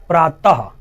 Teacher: अह की मात्रा बोलते वक्त ये गले से आवाज आती है और इसको हम बोलते हैं कंठय, यानी कंठ से बोली जा रही है।